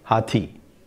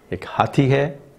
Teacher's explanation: in the one word utterance hathi, the E is much longer than hathi hai. If you want to make it long in that hathi hai sentence, ek hathi hai, it sounds very odd.